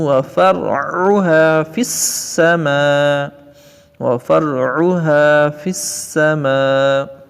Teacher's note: عین کو درمیان حلق سے ادا کریں گے